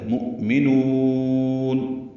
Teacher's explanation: مؤمنون یہ وقفاً مد عارض للسکون ہے، آخر میں نون ساکن پہ اظہار ہوگا، یاد رہے یہ قلقلہ نہ کریں۔ مؤمنون یہ کہنا غلط ہے، مؤمنون۔